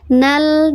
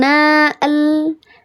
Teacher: nal dibacanya bukan naal tapi dia iltiqo sakinain maka dihilangkan namanya iltiqo sakinain bil hazaf